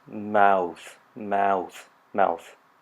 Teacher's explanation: the diphthong or the diphthong in mouth starting at AA and gliding up to an ooh sound